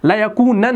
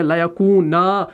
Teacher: ये नून जो है ये अलिफ में तब्दील हो गया, यहाँ पर एक ज़बर आ गई तो ये बन गया लयकूना।